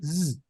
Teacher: La Zain es igual que la Z inglesa, se pronuncia enunciando una S sibilante a la vez que se hacen vibrar las cuerdas vocales, como cuando se imita el sonido de una abeja, zzz.